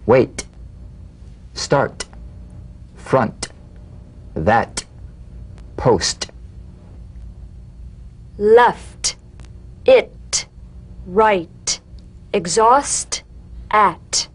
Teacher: The unvoiced T, tongue front palatal stop consonant, cognate to the D. The same staccato springing action as the D drum beat, with no voice, forms the light tap of the T.